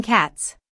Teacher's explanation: With voiceless consonants like cat, the s will sound like a sharp s.